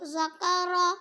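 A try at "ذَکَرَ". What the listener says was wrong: इसको मोटा नहीं पढ़ो, ये बारीक काफ है। ज़करा, ज़करा, ज़ा नहीं है, ये ज़ाल है। ज़करा,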